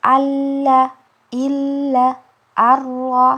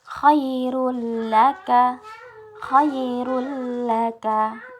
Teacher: Kemudian yang untuk ra dan lam ini tidak didengungkan. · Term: idgham bila gunnah